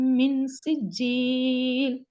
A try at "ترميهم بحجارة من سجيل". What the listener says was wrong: பிஹிஜாரத்தின் என்று நீட்டுறது பிள்ளையா? ஒரு செகண்ட் தான் நிட்டணும். ஹிஜ பிஹிஜ பிஹிஜ ஜ அவ்வளவுதான். பிஹிஜாரத்தின் பிஹிஜாரத்தின் ஜ அதுக்காக போறது பிள்ளை.